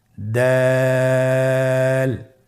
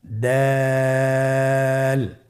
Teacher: দাল হরফটি বারিক হরফ। এই হরফটি উচ্চারণ করার সময় আমরা অবশ্যই 3 আলিফ টেনে পড়ব।